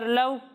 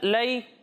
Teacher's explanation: واو لین اور یا لین کو بغیر کھینچے بغیر جھٹکا دیے نرمی سے پڑھیں گے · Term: واو لین یا لین